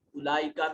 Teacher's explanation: یہ بڑی مد ہے 3 سے 4 الف کے برابر لمبا کیجئے